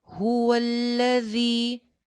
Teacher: ذال سیٹی کے ساتھ نہیں آئے گا